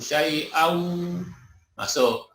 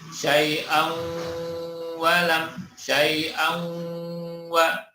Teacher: Syai'an, tanwinnya masuk ke huruf wawu. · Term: idgham bi gunnah